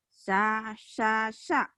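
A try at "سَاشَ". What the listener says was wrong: Sa'asya. Sya. Ibu syanya, Ibu sama seperti Bu Rea nih. Shinnya nggak keluar. Sa'asya. Sa'asya.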